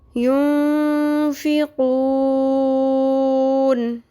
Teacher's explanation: آپ کو بتایا تھا کہ جب بھی ساکن کریں گے اور وقف کی صورت میں اگر مد اصلی آ رہی ہے، جیسے نون ساکن سے پیچھے ينفقون میں مد اصلی آ گئی ہے، نون ساکن سے پیچھے واو مدہ آ گیا ہے، تو کیا کریں گے؟ اس کو 3 الف کے برابر لمبا کریں گے